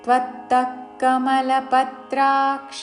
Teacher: పత్రాక్ష పా మీద త్రా మీద ఆఘాత